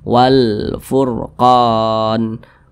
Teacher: huruf ra dibaca tebal, dibaca tafkhim.